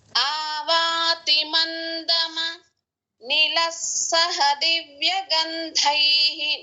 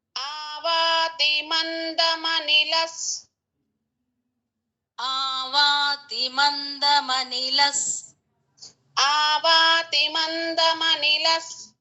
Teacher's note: ఆవాతి మందమ నిలస్సహ దివ్య గంధైః, నిల తర్వాత విసర్గ ఉంది, దాని ముందు సా ఉంది, అంటే సా ముందు ఉన్న విసర్గ కాబట్టి నిలస్ ఎస్ సౌండ్ రావాలి.